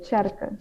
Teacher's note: in Frisian you say tjerke, so they kind of maintain that ch sound at the beginning